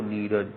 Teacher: विसर्ग का लोप हो जाता है और पूर्व स्वर दीर्घ हो जाता है